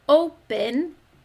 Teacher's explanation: We hear the long O sound, open, as its first syllable because it's an open syllable.